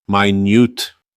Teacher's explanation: But minute with the stress on the second syllable changes both its meaning and pronunciation. The word with this stress means very precise.